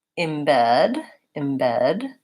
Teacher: the stress in this word falls on the second syllable so that first that first vowel sound is an unstressed vowel and so it might sound like embed embed oops this is